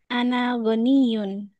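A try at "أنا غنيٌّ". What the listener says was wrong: Panjang dikit. panjang.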